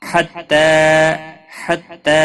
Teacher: تا کے اوپر کھڑی زبر ہے، ایک الف کے برابر کھینچ کر پڑھیں گے